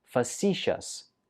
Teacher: stress goes on the second syllable